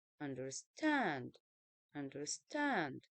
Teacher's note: two unstress syllables followed by a stress syllable